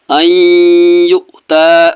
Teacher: نون ساکن کے بعد یا ہے تو نون کو ناک سے پڑھنا ہے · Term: گنہ